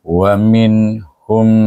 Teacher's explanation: kita tak boleh panjang, tak boleh dengung pada huruf nun tu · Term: izhar